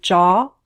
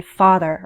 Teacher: For Some American English speakers, including me, there isn't always a big difference between /ɔ/ in jaw and /ɑ/ as in father